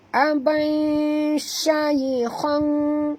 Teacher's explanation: huruf shin di sini jaga tafashinya, dan ya di sini sifatnya lin · Kena masukkan bunyi tanwin ke dalam shin disertai dengung 2 harakat ya. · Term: ikhfa haqiqi